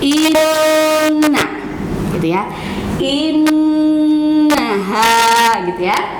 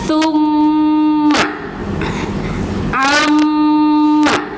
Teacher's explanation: ketika kita membaca huruf yang ada nun bertasydid atau mim bertasydid, maka itu keluar dari rongga hidung